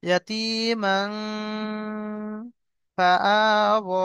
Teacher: তানবিনের পরে হরুফে ইখফার 15টি অক্ষর, 15টি অক্ষরের মধ্যে আপনার ফা এসছে, এই ফা, ফা এসছে। তো তানবিনের আওয়াজকে নাকে তুলে একালি পরিমাণ গুণনা করব।